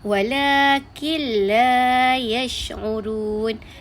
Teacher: Nun tu digabungkan dengan bunyi lam tapi tak ada dengung. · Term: idgham bila gunnah